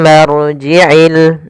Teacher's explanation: ada bacaan ghunah yaitu cara membacanya mimnya ditahan dulu